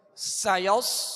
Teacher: سین کو سیٹی کی آواز میں سختی سے اور باریک پڑھیں گے. سایوس آگے صاد ہے، صاد کو پر پڑھیں گے، ہونٹ گول نہ ہو اور سیٹی کی آواز پیدا ہو.